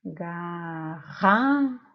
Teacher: Então, a sílaba tônica é a sílaba ra, ok?